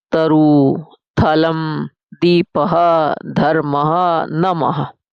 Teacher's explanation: जब हम त बोलते हैं तो हमारी जीभ का उच्चारण करती है दंत। यानी दांतों को छूती है। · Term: दंत से उच्चारण